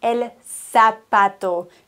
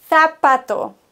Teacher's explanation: im spanischen wird ein Z gelispelt wie ein TH